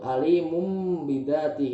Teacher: Yang ketiga ada iklab hurufnya cuma 1 yaitu ba. Cara membacanya itu mengganti nun mati menjadi mim mati.